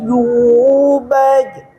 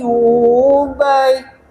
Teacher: Jim dengan ya sama ada di tengah-tengah lidah. Jadi lidah ini ngangkat.